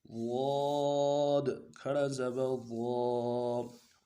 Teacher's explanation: پوری زبان کو، یعنی سائڈ جو زبان ہے سائڈوں والے، ان کو سائڈوں والے دانتوں کے ساتھ لگانا ہے۔ لگائیں گے تب یہ لفظ ادا ہوگا۔